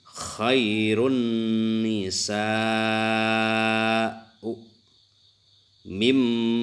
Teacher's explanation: memasukkan ini nun mati kaya tidak ada ya, diganti dengan mim dimasukkan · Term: idgham